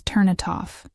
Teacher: In slow speech, you can hear every word clearly, but in connected speech, it becomes turn it off. The N links to it, and then it links to off. So, what you hear is turn it off, almost like one long word.